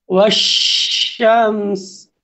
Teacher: ওশশামস আমি ওশামস অর্থাৎ মিমকে আর সিনকে একসাথেই উচ্চারণ করছি কারণ মিমও সাকিন সিনও সাকিন এখন যদি আমি এই জায়গার মধ্যে না থামি তাইলে শুধুমাত্র মিমের সাকিন উচ্চারণ হবে আর সিনের জের দিয়ে উচ্চারণ হয়ে সামনের দিকে এগিয়ে যাবে।